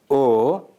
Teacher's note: a short mid-back rounded vowel in Telugu produced with the tongue positioned slightly back and the lips moderately rounded, allowing free vibration of the vocal cords.